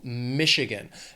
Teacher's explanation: The state has 3 syllables. Stress is on that first syllable,